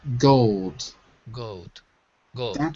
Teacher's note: And we don't say the L. We drop it.